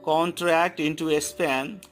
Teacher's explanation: Con is unstressed, tract is stressed, N is unstressed, to is stressed, A is unstressed, and span is stressed. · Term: iambic trimeter